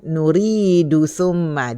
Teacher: Teruskan nuridu summa, dia tak bunyilah qalqalah dia kalau kita teruskan.